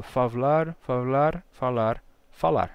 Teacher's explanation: o que a gente terminou perdendo aqui foi esse B né o faar vai virar um v primeiro favar e vai relaxando favar favar falar falar até dar o